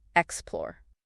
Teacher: It's pronounced explore with the stress on the second syllable.